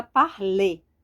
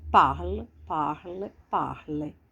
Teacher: Ele no infinitivo, falar, dá uma ênfase aqui no final. Parler. Aqui já é a ênfase no começo.